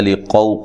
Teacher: क़ाफ़ को मोटा अदा करना है।